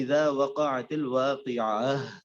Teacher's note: تو ہا کے اندر صفت ہے، یعنی آپ کا سانس اس میں جاری رہتا ہے